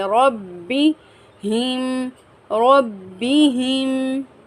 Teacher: را کو ہم پر پڑھیں گے، را کو با کے ساتھ سختی سے ملائیں گے